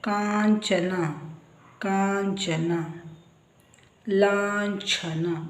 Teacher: ಇವುಗಳು ಸೊನ್ನೆ ನಂತರ ಬಂದಾಗ ಅದರ ಉಚ್ಚಾರ ನ್ಯ ಇದು ತಾಲುವಿನಿಂದ ಉಚ್ಚಾರ ಮಾಡ್ತಕ್ಕಂತದ್ದು ಅನುಸ್ವಾರದ ನಂತರ ಚ ಛ ಜ ಬಂದರೆ ಉಚ್ಚಾರ ನ್ಯ